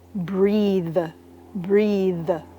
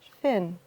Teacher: And the voiced is in the verb breathe, breathe. It's like there's a buzzing sound. You really hear it and your tongue is on your teeth. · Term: voiced TH